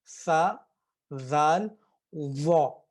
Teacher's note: ये तीनों जो हैं दांतों के नीचे जुबान को रखेंगे तो फिर इनकी अदायगी होगी